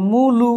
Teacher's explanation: যে মূলু দেখেন ম এর সাথে রসকার ময়ের সাথে রসকার তাহলে প্রথম স্বরধ্বনি ঠিকই আছে পরের ছিল কি আ হয়ে গেল উ প্রথম স্বর ঠিক পরের স্বরের পরিবর্তন একে বলছি আমরা প্রগতস্বর সঙ্গতি